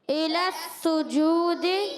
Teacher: سین مشدد ہے، ذرا رک کر ادا کریں گے، سیٹی والا حرف ہے، اور سین پر پیش ہے، جیم پر بھی پیش ہے، مگر سین کی جو پیش ہے یہ حرکت والی ہے، یہ حرکت ہے پیش. · سین کی پیش ہم نے جلدی پڑھی، مگر جیم وہاں پہ جو واؤ مدہ بن گیا، ایک الف کھینچ کر ادا کیا